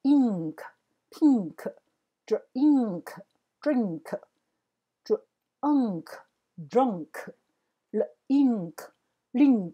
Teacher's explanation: 知道银行，那记得它的▁NK▁N▁不是只是念嗯，它是嗯嗯有一个鼻音的音出来。好， 它不是舌头顶上去而已，它有一个鼻音从鼻子的地方嗯这样子